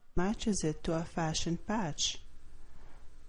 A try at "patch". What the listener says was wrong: The word patch, you have to pronounce that with more air, and I'm not entirely convinced that you're pronouncing these correctly, so repeat these words after me. Coach, wash, watch, matches, matches, fashion, patch.